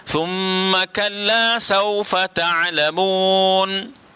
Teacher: sa, huruf lathawi, ya. Kena keluarkan lidah